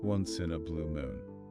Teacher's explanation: when you say it, really emphasize blue and moon. Those are the words that carry the meaning.